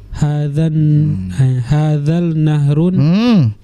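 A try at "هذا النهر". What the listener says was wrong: Kita sudah pernah belajar alif lam syamsiyah dan qamariyah. Nyambung. Alif lamnya nggak dibaca, bukan kita baca hadzal. Nah, tapi kita baca nyambung. Hadzan nahrun.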